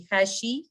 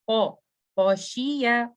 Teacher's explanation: उसके बाद खौशिया, खौ, मैं इसको खै नहीं पढ़ूंगी, मैं ऐसे नहीं पढ़ूंगी, खैशी नो, खौ हैवी लेटर है, back of the tongue goes up